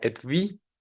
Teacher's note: El siguiente que tenemos es el diptongo UI, también viene del francés y como tal no es un diptongo, en realidad la primera U se pronunciaría como la labiodental V más la I larga, entonces sería et vi, acentuado, y esta palabra significa estuche, pero bueno, ortográficamente parece ser un diptongo.